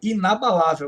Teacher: Esta palavra inabalável tem acento na penúltima sílaba aqui é uma paroxítona e terminada em L in surinam da